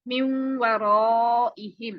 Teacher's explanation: ये नून साकिन है, वाव के अंदर मर्ज हो गया, मिन वराइहिम। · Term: इदगाम बिगुन्ना